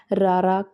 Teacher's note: ਅਗਲੀ ਕਿਸਮ ਆ ਕੰਬਮਾ ਵਿਅੰਜਨ ਰਾਰਾ ਕੰਬਮੀ ਧੁਨੀ ਵਾਲਾ ਹੈ ਕਿਉਂਕਿ ਇਸ ਦੇ ਉਚਾਰਨ ਵੇਲੇ ਜੀਭ ਵਿੱਚ ਕੰਬਾ ਜਿਹਾ ਪੈਦਾ ਹੁੰਦਾ ਹੈ